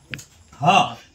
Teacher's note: ह। तो ह आप देखिए जीभ शांत है और यहाँ पर कंठ पर दबाव पड़ रहा है तो कंठ हो जाएगा